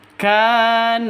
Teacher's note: panjang dua ketukan ada tanda berdiri di atasnya itu harus panjang dua ketukan karena mad asli